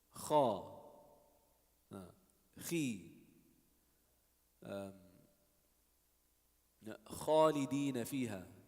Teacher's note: So ghayn and kha is the top of the throat.